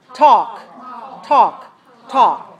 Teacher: no L sound no L pronunciation